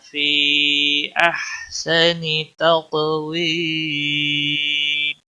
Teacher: یا مدہ ہے، ایک الف کے برابر کھینچنا ہوگا